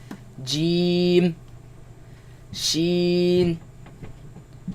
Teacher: they come from the middle of the tongue against the middle of the upper palate